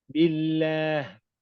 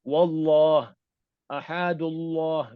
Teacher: Kalau didahului oleh huruf yang berbaris bawah, dia akan jadi lam tarqiq. Sebutan lamnya tipis.